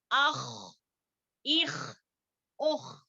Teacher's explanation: ٹھیک ہے، تو خ اور غین ادن الحلق سے نکلنے والے ہیں. ایک تو اس کو موٹا پڑھا جاتا ہے اور دوسری بات جو ہے خراج یعنی کہ کھجلی کی طرح ہوتی ہے جب ہم اس کو پڑھتے ہیں